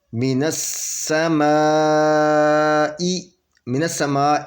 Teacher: من السماء، یہ میم کے اوپر زبر ہے اور الف سے پہلے زبر یہ ہے اور اس کے الف کے اوپر یہ مد ہے تو یہاں پہ 4 یا 5 حرکت کریں گے کیونکہ یہ مد واجب ہے